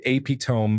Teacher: I didn't connect the written word with the way I heard people say it. I pronounced it epitome with a long O and silent E.